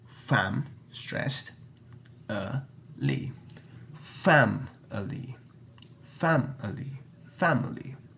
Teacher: The first sound, fam, is stressed. And we have the relaxed sound after that. And it ends with the li sound.